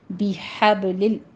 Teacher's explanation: بِحَبْلِ، بے نہیں ہے، بی ہے، بِحَبْلِ، ہا وسط حلق سے باریک ادا کرتے ہوئے آگے با کے اوپر قلقلہ کریں گے، اس کے بعد لفظ جلالہ کو باریک پڑھنا ہے۔